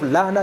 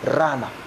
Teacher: Instead of learner, they say runner. Instead of L, they put R.